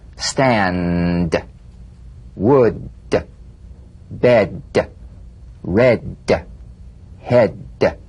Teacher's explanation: play this d drumbeat on the springing away of the tongue from the upper gum Ridge feel the pulsation in the tongue yeah tap the drumbeat d